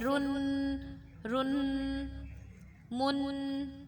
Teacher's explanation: اور جب را پہ یا جس پہ بھی دو زبر دو زیر دو پیش کو تنوین کہا جاتا ہے، دو زبر دو زیر دو پیش کو تنوین کہا جاتا ہے۔ تنوین پر غنہ کرتے ہیں، غنہ والے حرف کو ناک سے آواز نکلتی ہے